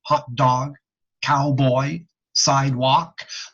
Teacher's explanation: all of the two syllable spawn DS what are spawned easels two syllable words with even emphasis on both syllables